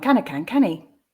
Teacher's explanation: that dropping of the sound in that final verse which gives the canny instead of can he